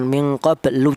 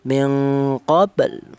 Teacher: Jangan min qablu, jangan, tapi mengucapkan huruf lam ya. Baru akan mengucapkan huruf lam tapi tidak sampai berharakat dhammah.